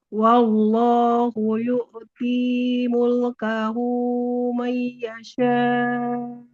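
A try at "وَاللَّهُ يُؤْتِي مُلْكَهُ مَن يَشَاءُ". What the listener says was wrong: Nah, hati-hati panjang dua harokatnya, jangan berlebih. Wallahu yu'ti mulkahu man yasha. Hanya tadi panjang dua harokatnya jangan terlalu lebih.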